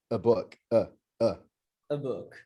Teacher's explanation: it's just that weak middle of the mouth vowel sound. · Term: schwa sound